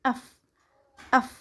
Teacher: bunyi labiodental dan fricative ialah bunyi F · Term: labiodental dan frikatif